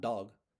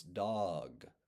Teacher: And even with a word like dog, there's a shadow diphthong at the end of the O. It's not dog, it's dog.